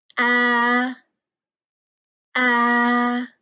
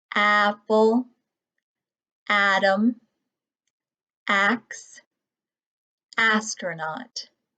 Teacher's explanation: sounds we're going to learn our jaw always drops down so my mouth is open and my tongue is resting at the bottom of my mouth kind of toward the front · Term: vowel sound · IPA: /a/